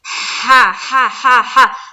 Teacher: हा निकालते हुए थोड़ी सी हलक से हवा की सी निकलती है